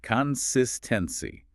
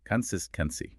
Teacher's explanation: The stress here is on the second syllable.